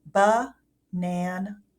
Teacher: So, for example, in the word banana, if you listen, ba-nan, even though we hear the sound, they are schwa a's in that word banana